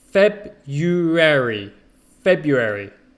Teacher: most people don't pronounce the r it's feb you airy february february okay so forget the r